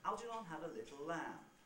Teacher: the three syllables of algernon are a bit quicker